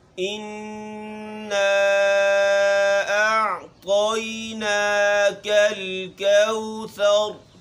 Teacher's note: غنہ یعنی کہ ہم آواز کو ناک میں لے کے جائیں گے۔ آواز رکنی نہیں چاہیے۔